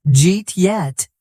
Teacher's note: a native might say it so fast that it sounds like Jeet yet. The words connect and change.